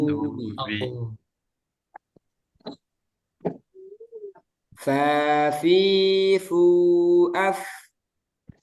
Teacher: Jadi jangan seperti P. Fa harus ada aliran suara